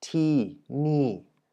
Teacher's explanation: tini is spoken in 2 falling tones.